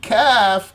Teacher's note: calf comes from the back of your tongue